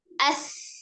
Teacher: Ada alhamsnya, aliran udara yang mengalir, kemudian juga dia sifatnya rawah, berarti suaranya juga mengalir. Ya, ada nafas mengalir, kemudian ada suara mengalir.